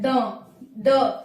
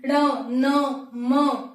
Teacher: पर लिखा हुआ है अंतिम प पंचमाक्षर य अनुनासिक होता है इसका उच्चारण कैसे होता है नाक और मुंह से होता है